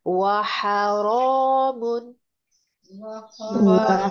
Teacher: ہا وسط حلق سے ادا ہوگا، شارپنس ہوگی اس میں۔ را کو پر کر کے پڑھیے اور اس کو 2 حرکات تک لمبا کیجیے، اور تنوین کے اوپر آپ نے غنہ نہیں کرنا ہے کیونکہ آگے تھاٹ لیٹرز میں سے آئین ہے۔